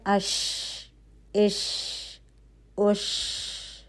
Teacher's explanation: ہوا کا چلنا محسوس ہوتا ہے، تو اس میں ہمس کی کوالٹی ہے